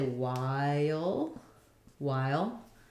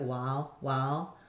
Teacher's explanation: wow um that's to me a little more Southern like while the eye diphthong might get a little reduced to just the uh which is just the ah part of it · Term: southern version